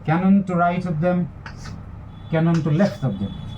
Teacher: So what we see here is the pattern is stress, unstress, unstress. One stressed syllable followed by two unstressed syllables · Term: dactylic diameter